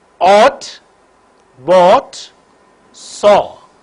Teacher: back of the tongue is raised to a position in between half close and half open the lips are in rounded position